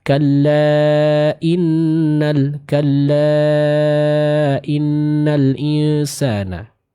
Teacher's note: Maka kita panjangkan dan sempurnakan bacaan mad tersebut dengan kadar 4 sampai 5 harokat.